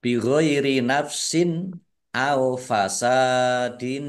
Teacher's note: Kasr tanwin bertemu dengan huruf alif. Bacaan izhar dibaca jelas.